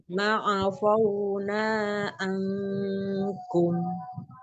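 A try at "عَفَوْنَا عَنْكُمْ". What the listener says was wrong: Fa-nya dibuka mulutnya biar tidak tebal terdengar ya. Afauna, afauna, jangan afauna, fa. Ini jadi tebal ya. Dibuka, mulutnya dibuka.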